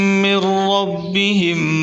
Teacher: من ربہم، را کو پر کر کے پڑھیں